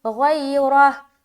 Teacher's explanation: गैन की अदायगी मोटे तरीके से करेंगे क्योंकि ये भी हरूफ मुस्तालिया में से एक है। तो हम पढ़ेंगे गैरह, और रा भी मोटा क्योंकि रा के ऊपर ज़बर है। · रा भी मोटा क्योंकि रा के ऊपर ज़बर है। देखिए रा के ऊपर ज़बर आ गया ना तो इसे मोटा पढ़ेंगे, अगर ज़ेर होता तो बारीक करते।